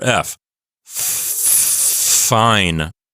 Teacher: as I said the letter F my vocal cords were not vibrating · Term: voiceless